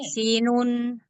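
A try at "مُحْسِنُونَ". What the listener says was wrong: Muhsinun. Agak lamain dikit. Panjangin.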